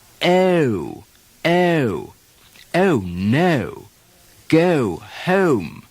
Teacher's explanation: begins with the tongue further forward and produces an ah ah segment at the beginning of the sound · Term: english long o, English long O